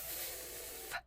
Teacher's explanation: When you make that sound, you put your teeth on your lip, and then you don't use your vocal cords at all. So this is what we call a whisper sound.